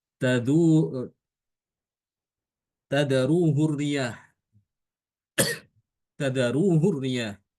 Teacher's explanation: hakinayahnya itu tidak dipanjangkan tapi dibaca pendek